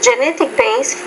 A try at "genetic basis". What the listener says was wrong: No, genetic basis. Basis has 2 syllables, not 1. So there is a genetic basis to this disorder.